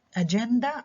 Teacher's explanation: حطيت برضو ستريس على المقطع ما قبل الأخير لأنه جاي بعد هذا المقطع كونسونانت كلاستر اللي هو ند.